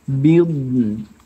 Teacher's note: do-nya tidak boleh qalqalah, ya